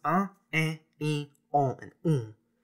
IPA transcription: ɐ̃ ẽ ĩ õ ũ